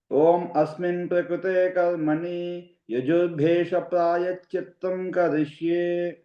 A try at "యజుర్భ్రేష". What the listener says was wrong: యజుర్భే కాదండి, యజుర్భ్రే. అది గుర్తుకోండి, రేప కూడా ఉంది.